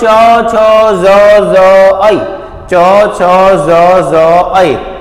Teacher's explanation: જ ઐ તમારી જીભ ક્યાં થશે તાળવા ઉપર ચોર ચ છ જીભ ક્યાં અડે છે તાળવા પર અડે છે એટલે આને શું કહીએ છીએ આપણે તાલવ્ય કહીએ છીએ